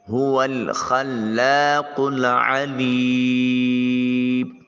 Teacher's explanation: یہ حلق کے کوے کے ساتھ زبان کی جب جڑ ملے تو یہ قاف ادا ہوتا ہے۔ عین کو وسط حلق سے ادا کریں گے۔